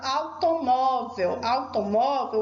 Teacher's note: Automóvel, o acento é no mó. É uma paroxítona terminada em L.